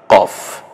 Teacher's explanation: আরো একটা নুক্তা যদি আসে এখানে হরফের ভিন্ন নাম হবে কফ একটু জিহ্বার গোড়ার অংশের দিক থেকে কফ একটু গম্ভীর আওয়াজে · একটু জিহ্বার গোড়ার অংশের দিক থেকে কফ, একটু গম্ভীর আওয়াজে, যেমন কাক ডাকে ক, সেভাবেই কফ।